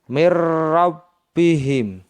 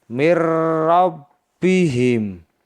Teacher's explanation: nun mati bertemu dengan huruf ro cara membacanya seperti ini mirbihim Mir yang semestinya dibaca Min karena Nun sukun atau nun mati bertemu dengan ro sehingga dibaca Mir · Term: idgham bila ghunah